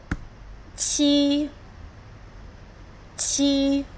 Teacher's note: It's the first tone. High but flat. But flat. Great job.